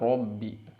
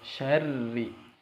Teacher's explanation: Berarti bunyi dari ro ini, bunyi dari ro di sini itu tarkik atau tipis ya. Kalau tadi di ayat pertama tebal robbi, kalau di sini tipis syarri. Jadi ketika masuk ke tasydid itu posisi mulut kita seperti mengucapkan ro, seperti pengucapan tasydid ya.